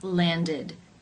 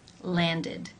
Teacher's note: the ending is pronounced with the i as in sit vowel and the D sound